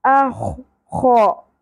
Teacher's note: خراش کے ساتھ خردرا پن ائے گا